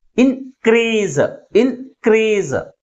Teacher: Second syllable is pronounced with a greater force comparing with first one. That's why the primary stress is on the second syllable. · క్రీజ్ అనేది ఎక్కువ force గా పలుకుతుంది, ఇన్ అనేది తక్కువ force గా పలుకుతుంది. కాబట్టి ప్రైమరీ స్ట్రెస్ ని సెకండ్ సిలబల్ ముందు ఉంచాం.